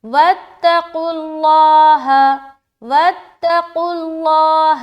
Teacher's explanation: قاف حروف مستعلیہ میں سے ہے اس لیے موٹا، لام اس لیے موٹا کیونکہ اس سے پہلے پیش ہے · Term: قاف بھی موٹا